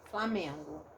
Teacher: Não usei o N, porque ele a função dele é nasalizar a vogal anterior.